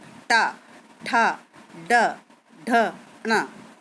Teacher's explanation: इसमें जीभ हमारी घूमकर तालू से टच हो रही है, तब ये टा वर्ग के व्यंजन बोले जाते हैं। · ऐसे टा वर्ग जो होते हैं इसमें जो हमारी जीभ है वो तालू से पलटकर यानी कि रोल होकर ऊपर को टकराती है।